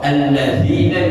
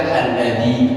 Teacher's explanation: alladzina dibaca alladzi, berarti membuang apa? Nun sama iya. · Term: membuang huruf